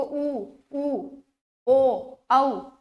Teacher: ठीक है, जब होठ की शेप गोल बन जाती है, देखो ऊ ओ औ, होठ की शेप जो है गोल बन जाती है, वो होते हैं वृत्ताकार